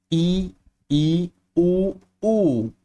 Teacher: और इन्हें बोलने में इन चारों को बोलने में हमारा जो मुख है ना वो बहुत कम खुला रहता है। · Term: संवृत स्वर